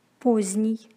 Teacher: З-д-н произносится как з-н. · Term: Непроизносимый согласный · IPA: [poz'nij]